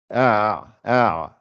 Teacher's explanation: La aïn, c'est le milieu de la gorge.